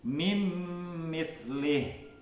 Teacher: nun sukun atau tanwin itu dimasukkan menjadi satu ya dengan huruf yang sesudahnya, ditasydidkannya ya, kemudian dibaca dengan mendengung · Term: idgham bi ghunnah